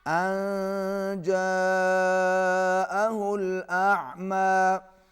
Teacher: نون پر اخفا ہوگا، آواز ناک میں جائے گی، اور جاءہ الاعمی بڑی مد ہے، کھینچ کے پڑھیں گے۔